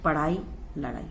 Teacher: इनके उच्चारण में जीभ को ऊपर उठाकर आगे की ओर फेंका जाता है, इसलिए इन्हें उत्क्षिप्त व्यंजन भी कहते हैं, जैसे पढ़ाई, लड़ाई।